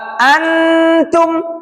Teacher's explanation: Pangkal gigi seri atas. Nun dan ta itu dekatan. Contohnya antum, nunnya sangat-sangat jelas. Nunnya, n-nya itu sangat kerasa.